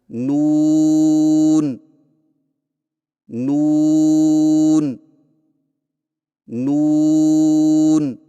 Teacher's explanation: نون کی ادائیگی میں زبان کے باریک کنارے کو اوپر والے دانتوں کے مسوڑوں سے لگا کر ہونٹوں کو چونچ کی مانند گول کرتے ہوئے باریک آواز میں پڑھیں